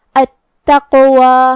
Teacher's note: کلمت التقوی یہاں حرف التا پہ تشدید ہے تو ہم 2 حرف کے برابر حرف التا کو پڑھیں گے. قاف کو ہم زبان کے جڑ اور تالو کے نرم حصے سے ادا کریں گے، اور اس پہ جزم ہے تو یہاں قاف کا حکم ہے قلقلہ. · قلقلہ کا معنی ہے حرف ساکن کو ہلانا، لہذا ہم حرف القاف کو ہلاتے ہوئے یہ کلمہ کو پڑھیں گے. التقوی.